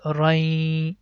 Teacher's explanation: If the next letter is ya, so we have to connect this fathatain, I mean run sound, with ya. It becomes rai, and we have to stretch this sound for 2 seconds. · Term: merge the sound